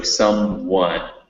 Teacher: there's a little w sound after the m